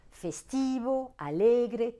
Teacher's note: porte l'accent tonique sur l'avant dernière syllabe